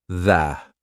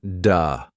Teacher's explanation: For example, the th sound. Your tongue has to come through your teeth.